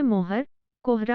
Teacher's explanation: हिंदी में ओ का उच्चारण ह के पहले ह्रस्व स्वर के रूप में होता है